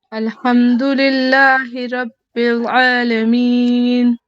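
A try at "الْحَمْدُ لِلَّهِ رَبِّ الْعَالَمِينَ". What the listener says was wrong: माशाल्लाह आपने आइन बहुत अच्छी अदा की.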